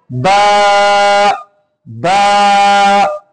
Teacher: এখন বা উচ্চারণ করবো আমরা ঠোঁটের ভিজা জায়গা হইতে, ঠোঁটের ভিজা জায়গা হইতে বা উচ্চারিত হয়।